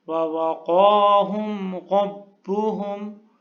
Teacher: قاف کو پر پڑھنا ہے، موٹا کر کے پڑھنا ہے